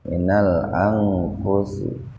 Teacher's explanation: nun mati ketemu fa, jadi dibaca samar tapi sepintas saja. Minal angfusi, nggak usah nggak usah begitu, karena nun mati ketemu fa nya dalam satu kata. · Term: ikhfa